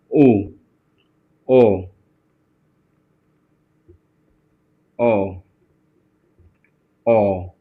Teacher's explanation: उ बोलोगे तो मुंह की आकृति गोल हो जाएगी। यानी वृत्ताकार हो जाएगी।